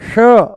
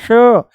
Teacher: जैसे ही हम बोलते हैं श जैसे ही बोलते हैं हम श मूर्धा ऊपर से बोला जाता है श। जीभ को थोड़ा सा ऊपर घुमा के तालू से लगा के बोला जाता है।